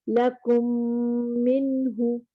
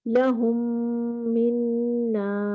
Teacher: میم ساکن کے بعد ایک اور میم ہو تو دونوں ہونٹوں کو ملا کر غنہ کے ساتھ پڑھیں گے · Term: ادغام شفوی